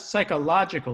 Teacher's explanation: you don't read the p